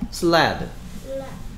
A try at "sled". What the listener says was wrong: 드 소리가 안 들려.